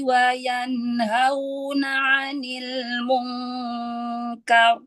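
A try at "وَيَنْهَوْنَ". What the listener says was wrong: Wa yanhauna. Hauna. Turunkan lagi makhrajnya. Haknya.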